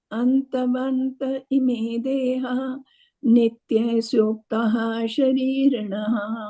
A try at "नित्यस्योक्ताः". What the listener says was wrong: I don't know why today, but you are always pronouncing the A as a E. It's nitya, not nitye.